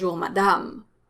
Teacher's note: pronounced the same way they're both strong ass sounds but the second one is stronger it's longer because it's part of the stressed syllable which is the last syllable when you say bonjour madame so